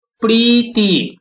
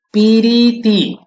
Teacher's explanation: মাঝখানে একটা হ্রস্বইকার এসে গেছে